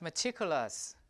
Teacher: the T here is in a stress position. So this T is aspirated